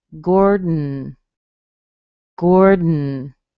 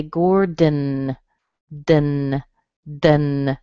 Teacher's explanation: I will add the D on it and say gourd, gourd. And then without moving my tongue away from my teeth, I will switch to an N. · I hit my tongue behind my teeth for the D. I pull it back a tiny bit, and then I hit it again to make the N.